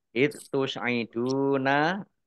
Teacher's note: dal sukun bukan kolkolah, jangan dipantulkan